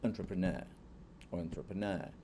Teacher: uma palavra que praticamente todos os Es são substituídos por um schwa sound. E daí, em vez, o brasileiro sempre ele não consegue pronunciar isso, porque ele vai ler como E e vai falar entrepreneur.